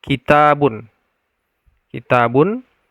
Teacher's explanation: yang mad asli ini dibaca dengan dua harakat